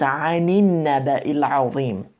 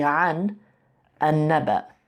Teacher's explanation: this sukun kind of becomes a kasra on there for liaison, so you don't have to stop. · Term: liaison vowel